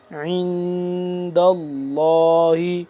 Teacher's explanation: لام کو پر کر کے پڑھیں گے کیونکہ اس سے پہلے زبر ہے